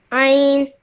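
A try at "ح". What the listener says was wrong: Ein is this one over here. This is ein, whereas this is ha.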